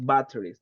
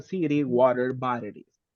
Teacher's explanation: cuando está rodeada de sonidos de vocal, en American English generalmente cambia un poco la pronunciación. No es tan marcada la T.